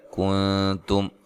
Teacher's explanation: حی لین ہے، سا کو نرم ادا کرنا ہے، ما الف مدہ ہے، کنتم نون ساکن کا اخفا مع الغنہ ہے، باریک اخفا ہے، تا کو باریک پڑھنا ہے، میم ساکن کا یہاں اظہار ہے، غنہ نہیں کریں گے۔